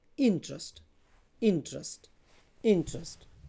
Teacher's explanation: the stress is on the first syllable int, not on the second one